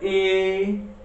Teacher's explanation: री ए एमा पहिल्यै दुई गुना समय छ किनभने ए भनेको हाम्रो अ र ई को मिश्रणले बनेको नि त, त्यही भएर यसमा पहिल्यै यसको दुगुना मात्रा छ। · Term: मिश्रित स्वर